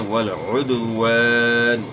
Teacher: उद्वान नहीं पढ़ना, आइन की आवाज़ गले के दरमियान से निकालनी है, वल उद्वान, और वाव की अदायगी में आपने नातमाम होंठ गोल करना है, यानी वाव की अदायगी में ऊपर वाले दांत आपने इस्तेमाल नहीं करने, वाव में दांत इस्तेमाल ही नहीं होते हैं।